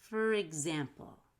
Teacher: make a strong r in between